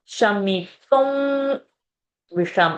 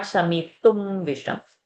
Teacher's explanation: Anuswara now here will become wakara, wa, because next word is va, visham. Visham, sha is a murdhani.